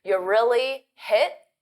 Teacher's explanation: I don't say hit and pronounce that t because it forces me to take a pause · native speakers, we often pronounce you as a very unstressed ya.